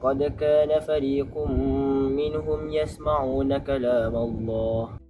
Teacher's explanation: Bila nun sakinah atau tanwin jumpa enam huruf kerongkong ini, kita kena baca bunyi N dengan jelas tanpa dengung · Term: izhar